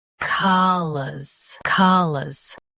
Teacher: Stress ca. Keep lus soft and quick. · Both US and UK have the same pronunciation of this word. Stress ka, keep lus soft and quick.